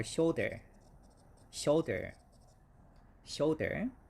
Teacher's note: we have a stress in the first syllable